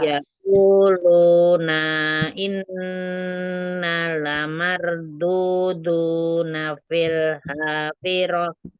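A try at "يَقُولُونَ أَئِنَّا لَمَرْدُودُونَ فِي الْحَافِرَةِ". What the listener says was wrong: Nanya nggak usah panjang ya, nggak ada matobi'inya yang itu. Na langsung. Yaquluna na'in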